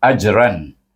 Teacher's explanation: Izhar apa? Perhatikan huruf selepas tanwin itu, iaitu huruf ain, huruf halkum, tengah halkum, maka dibaca dengan izhar halki